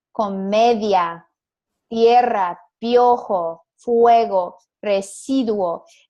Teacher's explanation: these two vowels, a weak one and a strong one, blend together and become one sound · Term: diphthongs